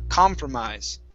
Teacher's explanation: Notice the stress is at the very beginning of the word, com.